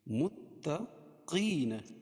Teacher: یا ساکن سے پہلے زیر ہو تو یا مدہ ہوتی ہے، اس کو ایک الف کے برابر کھینچ کے پڑھتے ہیں۔